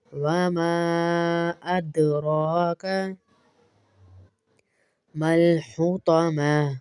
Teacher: دال کے اوپر کلکا بھی ادا کریں گے